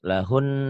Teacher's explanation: Karena nunnya selain bertasydid, lahunnya juga termasuk huruf gunnah. Nunnya ini ya.